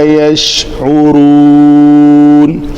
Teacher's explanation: عین کی ادائیگی وسط حلق سے نکالنی ہے